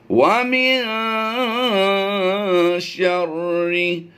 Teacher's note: नून साकिन के बाद हरफ शीन आ रहा है, तो हम यहाँ पर इख्फ़ा करते हुए गुन्ना ज़मानी की आवाज़ देते हैं।